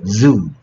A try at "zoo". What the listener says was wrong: 주는 아니고 zoo. 으으 해봐. 으으 해봐.